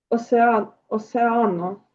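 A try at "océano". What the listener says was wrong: Бачите на е наголос. Осеано. В нас океан. Тому хочеться як осеано прочитати, бо ми так звикли. Але ні.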